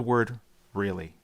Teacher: Said in a flat tone, it's a simple acknowledgement. But stretch it out with a rising pitch.